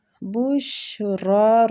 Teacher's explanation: را پہ کھڑی زبر ہے تو را کو کھینچیں گے